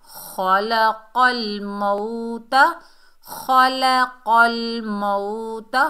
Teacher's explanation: खा मोटा हरूफ, फुल माउथ लेटर, हरूफ इस्ताला में से है। क़ाफ भी मोटा हरूफ है, बीच में लाम जो है ये बारीक हर्फ है, ख्याल करना है।